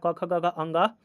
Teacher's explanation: कंठ से जो है वो क वर्ग सारा आ जाएगा।